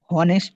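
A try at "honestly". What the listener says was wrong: হ্যাঁ অনেস্টলি, হ্যাঁ অনেস্টলি, তো এখানে এইচ উচ্চারণ আসবে না কিন্তু, অনেস্টলি।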